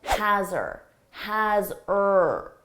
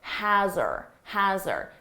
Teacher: Maybe you noticed that has her sounded like has-er, has-er. So we often drop the H on her